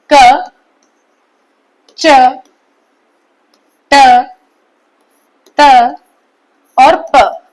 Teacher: क वर्ग कंठ से, च वर्ग तालु से, ट वर्ग मूर्धा से, त वर्ग दंत से और प वर्ग ओष्ठ से स्पर्श करके निकलते हैं। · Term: स्पर्श व्यंजन